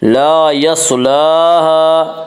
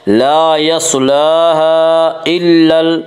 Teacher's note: لام کے اوپر کھڑا زبر ہے، کھڑا زبر کو ایک الف کے برابر کھینچ کر پڑھیں گے